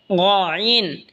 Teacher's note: গইন হলকের শেষ ভাগ হয়তো উচ্চারণ হবে গইন, গইন। এই খ যেখান থেকে উচ্চারণ হয়েছে সেখান থেকেই গইনও উচ্চারণ হবে।